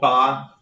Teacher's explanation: for BA your voicing your vocal chords actually start vibrating before you open your lips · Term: voice onset time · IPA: b a